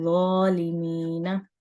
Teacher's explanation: ज़ा को नरमी से पढ़ा जाएगा, लेकिन इसको पढ़ते हुए हमारा मुंह गोल होगा। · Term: मोटा